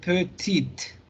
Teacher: Y luego tienen la versión femenina, pequeña, y pequeña lo vamos a pronunciar petite. Hasta la T, la E no la vamos a pronunciar.